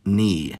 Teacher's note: the /k/ disappeared before /n/ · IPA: [k]